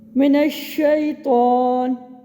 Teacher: شین کی ادائیگی میں جو آواز ہے وہ ہمارے منہ میں پھیل رہی ہے، اس کو کہتے ہیں تفشی۔